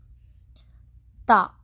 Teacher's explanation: زبان کی نوک اوپر کے درمیانی دانتوں کی جڑ سے